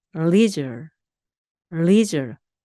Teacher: 앞부분이 강하게 leisure, leisure 이렇게 발음하시면 되겠습니다.